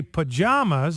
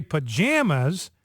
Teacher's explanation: some people in America say pajamas like the A as in father. Other people say pajamas like the A in jam.